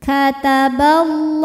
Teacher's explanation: alif lam menghadapi huruf Syamsiyah yaitu lam maka alif lam tidak kita baca · la dihukumi dengan Mad Thobi'i muqadar sebab lamnya barisnya fathah berdiri maka lam panjang dua harakat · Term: alif lam syamsiah